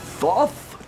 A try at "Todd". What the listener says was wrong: Todd. The H is silent.